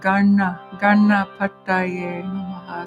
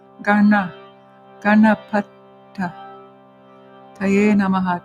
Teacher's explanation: So you're rolling the tongue back on that na. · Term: Retroflexive N and T